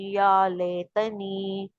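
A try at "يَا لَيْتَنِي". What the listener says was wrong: ले नहीं होगा, लई होगा, लई मदलीन है ना, तो मदलीन को लई, लई पढ़ते हैं, लै नहीं पढ़ते, बड़ी जा नहीं लगाते आगे अल्फाज के। लई लईतनी,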